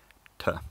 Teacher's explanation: In modern standard English, it's a voiceless alveolar plosive, t, which is sometimes slightly affricated.